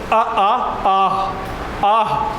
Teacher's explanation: आह जो है वो क्या है, कंठ से निकल रहा है